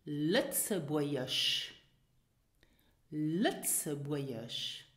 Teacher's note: the letter G is not pronounced here. It is silent. And the vowels U, E are not pronounced W, but more than Oi.